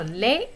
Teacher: the D is not pronounced, it is silent.